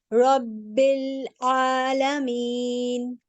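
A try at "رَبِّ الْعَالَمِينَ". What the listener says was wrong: ठीक है, अल्हम्दुलिल्लाह। Keep it up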